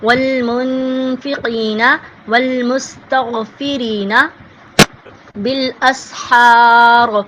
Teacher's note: مستغفرین کا جو را ہے وہ باریک پڑھا جائے گا